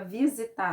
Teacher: o tar é a sílaba tônica da palavra visitar